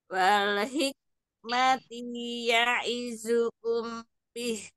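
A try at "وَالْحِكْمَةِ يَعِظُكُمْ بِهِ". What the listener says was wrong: wal hik ada hamis ya kaf sukunya kemudian ti jangan dipanjangkan cukup satu harokat saja wal hikmati ya'idhukum bih wal hik alirkan nafasnya sedikit wal hikmati wal hik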